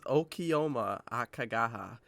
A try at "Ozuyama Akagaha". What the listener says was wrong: That's Z. I think you misread the Z as a K.